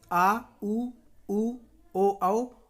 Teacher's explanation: जिन स्वरों के उच्चारण में जीभ का पश्च भाग काम करता है उन्हें दोस्तों पश्च स्वर कहते हैं